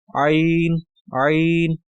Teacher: عین کو ہم حلق کے درمیانی حصے سے جہاں سے ہم ہا ادا کرتے ہیں وہیں سے جو ہے عین کو بھی ادا کریں گے